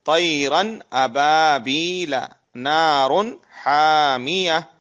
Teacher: نون کو ظاہر کر کے بلا غنہ کے جلد پڑھیں گے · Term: اظہار